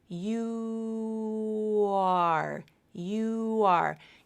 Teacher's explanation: the right area to create the W consonant so that's why a little W consonant is produced as you transition from U to the next vowel